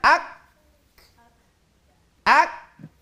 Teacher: Jadi syiddahnya didahulukan, baru itu hamasnya. Dua-duanya harus ada